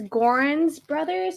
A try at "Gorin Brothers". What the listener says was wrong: Yeah, it's Gorin Brothers. There's no S in it.